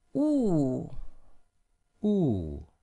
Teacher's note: the fourth is going down